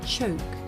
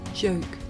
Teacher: the voiceless sound that you hear at the beginning of the word choke and the voiced sound that you hear at the beginning of the word joke